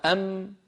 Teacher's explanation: يخرج الميم الساكنة بالتصادم بين الشفتين